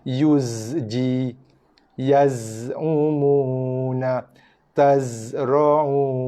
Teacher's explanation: zai bila berbaris mati dia ada bunyi desiran yang jelas. Dalam kitab tajuk kadang dia disebutkan bunyi desiran macam lebah yuzji, yaz'umuna, tazra'una.